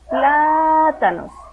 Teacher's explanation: Si alargamos la sílaba pla, entonces esa sílaba que se alarga es la tónica, es la que lleva la fuerza de acentuación. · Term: sílaba tónica